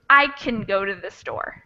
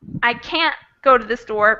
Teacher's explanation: can gets shortened and can't doesn't it's longer